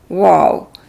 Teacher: ہونٹ جو ہیں وہ راؤنڈ شکل میں آتے ہیں، لیکن اس میں بالکل بند نہیں کرتے ان کو۔